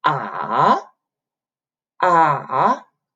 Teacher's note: the third tone which is like you go down a little bit and then go up